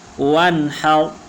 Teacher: وانحر، را موٹی پڑی جائے گی۔ را حروف مستعلیہ میں سے نہیں ہے، لیکن را سے پہلے جو حرف ہے ہا، اس کے اوپر زبر آیا ہوا ہے، اس لیے اس را کو ہم موٹا کر کے پڑھیں گے۔